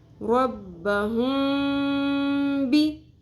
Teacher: میم کی آواز کو ہم چھپا لیتے ہیں اور غنہ بھی کرتے ہیں